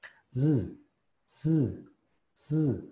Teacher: Recuerden que es como la S, pero se corta más el aire con una vibración. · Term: la S vibrante